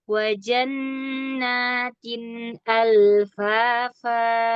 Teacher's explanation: lam sukun dia punya sifat tawasud, ya, pertengahan, mengalir. Jadi nggak mau buru-buru dan nggak mau juga masuk hidung, ya, karena dia bukan huruf gunnah.